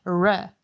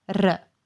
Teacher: As you could notice, we in Croatian rolled the R